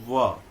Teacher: व यानी कि ओठ जो है आप सटने नहीं दीजिए, और ऊपर का दांत जो है, ऊपर का दांत और निचला ओठ का उपयोग कीजिए, व है ना, ओठ सटेगा नहीं, व।